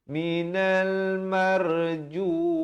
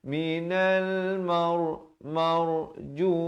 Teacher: Latakunanna minal marjumin. Ra di situ dibacakan dengan tebal. Jangan baca nipis.